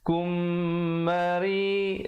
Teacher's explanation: Kum, dengung di situ, mim mati bertemu mim, idgham mislan saghir, dengung 2 harakat